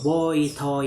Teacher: the tongue glide begins at the point associated with O and moves toward the position of E, the lips opening around the first element, changing the neutral to neutral for the second.